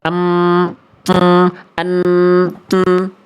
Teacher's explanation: mim dan nun sama-sama dari pangkal hidung. · Ketika kita baca dan an, kita tutup hidung kita suaranya mampet. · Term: dengungnya, al-khayshum